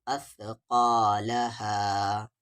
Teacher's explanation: سا کا مخرج ہے زبان کا کارنر اور سامنے والے دو دانت کا کارنر